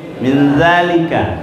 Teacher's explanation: Jadi itu nun ini, nun atau tanwin bertemu dengan ke-15 huruf ini selalu berada, nunnya itu samar berdengung di awal huruf.